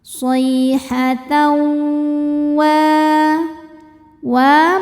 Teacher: Selanjutnya ada idgham bi gunnah karena ada tanwin fathah menghadapi huruf waw. Cara bacanya tanwin dimasukkan ke waw disertai dengung.